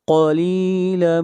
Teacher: قاف کو موٹا پڑھیں گے، قاف کو کاف نہیں پڑھنا۔ اگر قاف کو کاف پڑھیں گے تو یہ لحن جلی ہوگی اور یہ غلطی کرنا حرام ہے۔